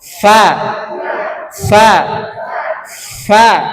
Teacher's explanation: Fa ada hembusan napas yang kuat di sini. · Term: huruf fa